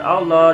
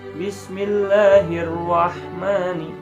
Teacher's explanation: maka kita baca dengan bunyi lah, tipis ya lamnya, maka dengan bunyi lah. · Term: lam tarkik